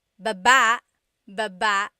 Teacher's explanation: Emphasis is on the second syllable syllable. That means to go down.